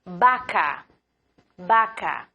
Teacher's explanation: La UB, mismo sonido de la B, então pronunciamos UB. O V tem o mesmo som de B em espanhol. Não temos o som do V em espanhol.